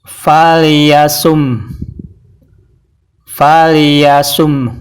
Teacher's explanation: jadi ada bunyi H yang seperti orang mengeluh